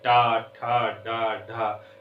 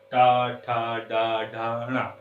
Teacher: हमारी जिह्वा जो होती है वो क्या होती है, मुड़ जाती है। जिह्वा क्या कर जाती है, मुड़ जाती है, और इसी मुड़ने को ही हम क्या कह देते हैं, मूर्धन्य व्यंजन कह देते हैं, या मूर्धन्य कह देते हैं।